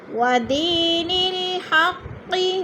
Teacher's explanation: ودین الحق، ودی یا ساکن سے پہلے دال کے نیچے زیر ہے تو یا مدہ۔ یا مدہ کو 1 الف 2 حرکات کے برابر لمبا کر کے پڑھنا ہے